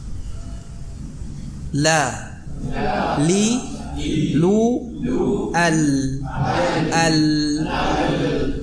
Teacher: Adapun yang dari ujung sisi lidah itu makhrajnya huruf lam.